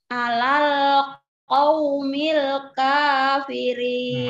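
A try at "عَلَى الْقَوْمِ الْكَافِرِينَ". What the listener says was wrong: Masih kepanjangan, bu. Kafirin. Kalau kita sudah lebihkan kafirin itu sudah lebih. Qaumil kafirin.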